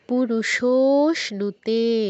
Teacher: আবার এটা খেয়াল রাখতে হবে, শোতে যতটা টাইম দিচ্ছি তেতে যেন সেম টাইম না হয়ে যায়, তেতে শো থেকে কম টাইম দিতে হবে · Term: প্লুত